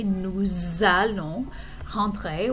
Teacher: we have a liaison between the S and the A.